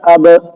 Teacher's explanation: اب حمزہ با زبر اب، دیکھو میرے ہونٹ ملے با میں لیکن ملنے کے فوراً بعد ہٹ گئے، اب تو یہ جو ڈبل آواز نکلی ملنے کی اور ہٹنے کی اس کو قلقلہ بولتے ہیں۔